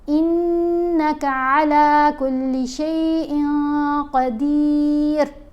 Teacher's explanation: اس نون کی آواز کو ناک میں چھپا کر پڑھنا ہے۔ قاف حروف احفا میں شامل ہے، اس لیے ہم نے شیئن نہیں پڑھا۔